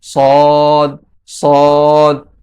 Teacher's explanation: সদ হরফটি জিহ্বার আগা, সামনের নিচের দুই দাঁতের পেট ও আগার সঙ্গে লাগিয়ে উচ্চারিত হবে। সদ, সদ। জিহ্বার আগা যখন সামনের নিচের দুই দাঁতের পেট ও আগার সঙ্গে লাগবে তখন সদ উচ্চারিত হবে।